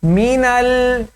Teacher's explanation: لام پر تھوڑی دیر رکنا ہے، جلدی سے اس کو ادا نہیں کرنا